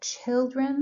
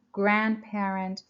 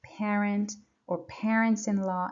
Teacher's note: Like children, the stress is on the first syllable